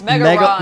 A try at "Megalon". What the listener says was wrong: No, but it's Megalon, but the box art from Japan, Megaron. The L is not pronounced, you know, in Japanese, so they literally wrote R, Megaron.